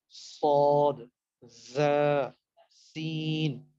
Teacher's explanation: like وصل یعنی وصل کی طرح، سیٹی کی طرح کی آواز نکلتی ہے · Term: صفیر